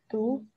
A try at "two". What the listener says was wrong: Why it's different? First you said do and then second do. Okay, so it's gonna be like this. For example, there is someone's a person's name Joe, right? G-O-E. That's Joe. So this one also the same.